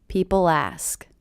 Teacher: I do hear that L as really linking to the beginning vowel sound.